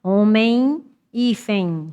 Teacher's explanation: Qual é que termina em N e qual é que termina em M? É a mesma pronúncia, o final, ditongo nasal.